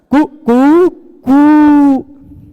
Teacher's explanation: किसी वर्ण को, जैसे मुर्गे को बोलते हुए सुना होगा आपने, कुकड़ा बोलता है कुकुटा, है ना, कुकुटा प्रातः वदति ना, कु कु कु अंतिम वाला, अंतिम बार वह पहले बार ह्रस्व रहता है, उसका फिर दीर्घ रहता है, फिर प्लुत रहता है, कु कु, फिर उससे भी बढ़ के कु, वो वाला 3 वाला, है ना, सुना होगा आपने।